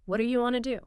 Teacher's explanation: And then want to becomes wanna. That's a massive reduction